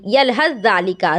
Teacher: سا اور زال دونوں کی آواز تو نہیں آئے گی، آواز صرف ایک کی آئے گی، یلحظ ذالکا، زال کی صرف آواز آئے گی۔ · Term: ادغام تام